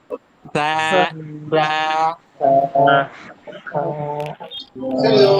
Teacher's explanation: জিহ্বার সামনের অংশ উপরের দাঁতের সাথে আলতো করে লাগিয়ে বলতে হবে সা সা। খুব উচ্চারণটা আলতো।